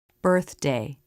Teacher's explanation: Watch the tongue tip come in and flip up for the D. This is a quick move of the tongue that you can practice over and over to make it more natural.